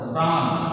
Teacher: বানানে মূর্ধন্য আছে কিন্তু আমাদের উচ্চারণ করতে হবে দন্তন্য মতো